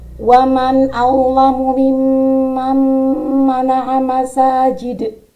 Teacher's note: Pada lafadz mimman itu mim bertasydid yang berhukum bacaan gunnah musyaddadah. Sedangkan mim bertasydid yang kedua itu bukan gunnah musyaddadah karena di depannya ada nun sukun bertemu mim.